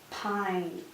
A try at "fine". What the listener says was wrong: Close. We're going to use our F sound for this one.